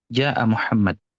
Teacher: kalau kita ngomong bahasa Arab sehari-hari, si Ja'a ini akan cuma dibaca 2 harokat aja.